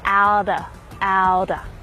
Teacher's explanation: the Australian accent will use the flap T same with the American one